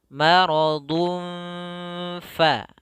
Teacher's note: Ikhfa menyamarkan suara n-nya, suara tanwinnya